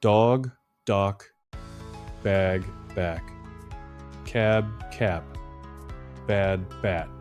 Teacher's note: So match the ending. Voiced ending, carry your voice through it. Voiceless ending, cut the voice and finish the word with air.